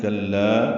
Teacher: کلا کاف باریک لا سے ملانا ہے، لا الف مدہ دو حرکات لمبا ہے